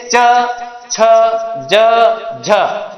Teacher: ये बोलते हैं तो अपनी जबान का, जीभ का जो ऊपरी हिस्सा है वो तालु को स्पर्श करता है। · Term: तालव्य ध्वनियां